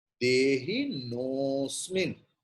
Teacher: The previous vowel o will be prolonged.